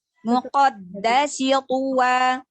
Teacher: Muqaddasi apa saja? Dalnya, dal tasdidnya sedikit ditekan ya, karena melambangkan dua huruf dalnya.